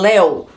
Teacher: Mas como o ditongo é aberto, leu seria fechado o ditongo. Como eu falo léu, o ditongo é aberto. Então é acentuado. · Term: ditongo aberto